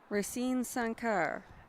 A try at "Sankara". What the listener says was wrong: The E on the end is an A.